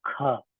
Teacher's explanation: महाप्राण कहते हैं प्राण वायु ज्यादा निकलती है तो इसको थोड़ा गहरे से उच्चारण करें